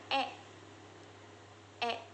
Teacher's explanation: Huruf E dibentuk dengan lidah yang berada di posisi tengah dan depan serta bibir yang rileks.